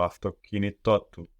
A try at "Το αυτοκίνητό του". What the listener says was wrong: Here it sounded like you moved the accent. Το αυτοκίνητό του. But we need to hear both. Το αυτοκίνητό του.